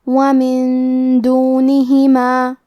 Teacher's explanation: دال حروف الاخفاء میں سے ہے اور اخفاء کا معنی ہے چھپا دینا، تو ہم نون ساکن کو چھپاتے ہوئے اور غنہ کے ساتھ یہ حکم کو ادا کریں گے.